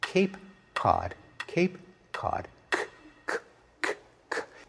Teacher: In one case, the k is produced way back in the mouth. The other, it's produced much farther forward. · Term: co-articulation